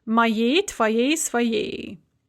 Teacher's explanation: The feminine ending is going to be a stressed yi